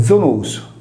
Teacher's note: come il sardo attuale Zonus, vale a dire con la nostra Z sonora